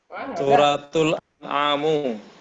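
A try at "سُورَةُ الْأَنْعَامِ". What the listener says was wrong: An'ami kasro. Suratul An'ami.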